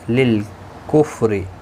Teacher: ہم میم ساکن کے بعد لام آئے، اظہار شفوی ہوگا. للکفر رو زیر کی وجہ سے باریک پڑھا جائے گا